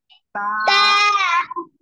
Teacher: জিহ্বার আগা সামনে উপরে দুই দাঁতের গোড়ার সাথে লাগিয়ে উচ্চারণ হবে